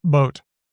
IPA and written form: ɓoʊt (boat)